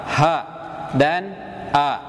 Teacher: tenggorokan pangkal atau tenggorokan paling bawah ini memproduksi dua huruf yakni huruf hamzah dan huruf H jadi kalau pemirsa ketika melafalkan huruf ha itu bukan dari dada